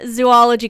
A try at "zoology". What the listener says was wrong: So you can't say zoology because then there would be 3 O's. You have to say zo because it's Z-O and then ology.